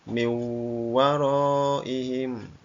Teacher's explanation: Min waroihim ya karena nun mati bertemu wau maka dibaca miim Nun matinya hilang masuk ke dalam huruf wau